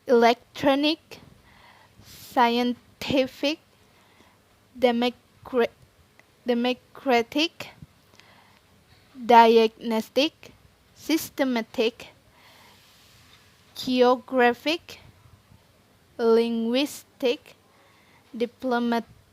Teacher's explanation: the stress usually placed on the second to last syllable